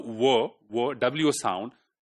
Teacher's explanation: So V, W sound, it is, although it is pronounced from your lips and the sound is bilabial, but your back of the tongue is raising towards velar also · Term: bilabial approximant